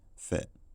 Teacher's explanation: the fit vowel has centralized and can gain a little bit of lip rounding in certain contexts, such as after a sound like f that's pronounced with lip closure.